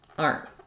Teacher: my n Sound is very short so it kind of sounds like aren't aren't so you don't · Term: unreleased te